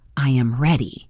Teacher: My voice naturally falls at the end. It's like it's landing softly.